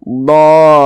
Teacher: dipanjangkan dulu 6 harokat, kemudian ujungnya itu dinaber. Dolin dikasih penekanan · Kemudian laminat dolin, do ini adalah mad lazim mutsaqqal kalimi, atau biasa disebut juga dengan mad lazim kalimi mutsaqqal. Jadi cara mengucapkannya itu ya dipanjangkan dulu 6 harokat, kemudian ujungnya itu dinaber.